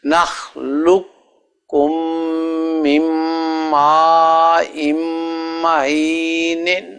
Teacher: نخلقکم من ماء، وہ قاف جو ہے وہ تو کاف میں مدغم ہو گیا، دونوں مل گئے، تو اس لیے جب آپ پڑھیں گے تو جس سے پہلے بتایا گیا ہے حضرت پیر صاحب نے پہلے لفظ میں لام کو کاف سے ملانا ہے، کاف کو میم سے، میم کو آگے میم سے، نون بھی مدغم ہو جاتا ہے